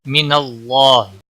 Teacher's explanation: اللہ کے لام کو موٹا پڑھیں گے کیونکہ نون کے اوپر زبر ہے اس لیے موٹا پڑا جائے گا، اس کے اوپر کھڑی زبر بھی ہے، ایک الف کے برابر کھینچ کر پڑھیں گے، ہی کو کھینچنا نہیں۔